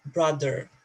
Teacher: so in American you produce both R sounds